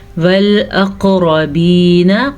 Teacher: قاف کے اوپر میں نے قلقلہ کیا کیونکہ قلقلہ بنتا ہے